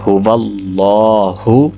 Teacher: آگے هو اللہ، هو اللہ، یہ ہا ہے جو کہ حلق کے نیچے والے حصے سے ادا ہوتی ہے، اور پھر اللہ کے لام کو پر پڑھا جائے گا، کیونکہ اللہ کے لام سے پہلے حرف واو پہ زبر ہے